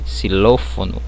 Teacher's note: quando ela vier ao início, eu pronuncio como se tivesse um S